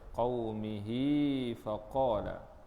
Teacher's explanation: Mak silah. Di sini mak silah qasirah, pendek, dua harakat.